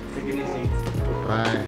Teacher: the voiced quality of the vowels around that voiceless T they bleed into the T creating a voiced T which is the same as a d